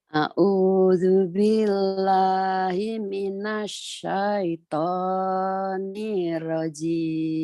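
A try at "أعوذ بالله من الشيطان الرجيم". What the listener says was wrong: A'udzu billahi minasyaitonir rajim. Jangan. Itu ada tasjid. A'udzu billahi minasyaitonir rajim. Nirrajim.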